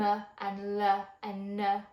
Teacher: what you're doing is you're adding something called a schwa onto the end of that letter. And that uh on the end is a schwah sound.